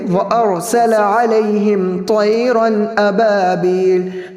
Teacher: را پور ہے، اس کی وجہ سے حمزہ نہ پور ہو اور نہ ہی سین پور ہونا چاہیے، جیسا کہ وارسل کچھ لوگ ایسا پڑھتے ہیں، ایسا نہیں پڑھیں گے.